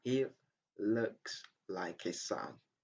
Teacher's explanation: Okay, the first he, you have to pronounce the sound ha. But in the second one, it's not an obligation to pronounce that.